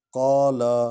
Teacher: قاف کو حلق سے پڑھیں گے